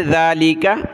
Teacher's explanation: اگلی آیت دیکھیں. ذالک، ذال کے اوپر کھڑا زبر ہے، ایک الف کی مقدار کھینچیں گے، زبان نکالیں، ذالک.